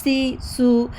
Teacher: the tip of the tongue comes close the upper teeth but does not touch air follow Santhali